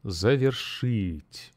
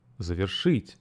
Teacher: And the stress falls on the last syllable.